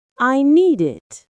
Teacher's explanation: The duh sound from need links to it. It sounds smoother. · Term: linking sounds